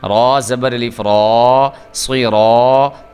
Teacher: چونکہ را جو ہے وہ پر پڑھا جا رہا ہے اس لیے الف جو ہے وہ بھی پر کر کے پڑھا جائے گا